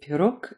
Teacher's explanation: the g at the end of pirog is pronounced k. They're unvoiced.